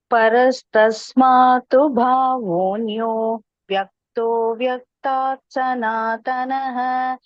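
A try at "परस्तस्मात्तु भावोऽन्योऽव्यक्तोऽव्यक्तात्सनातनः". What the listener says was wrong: You may perhaps avoid that small pause there. Parastasmatu bhavonyo vyakto vyakta sanatanaha.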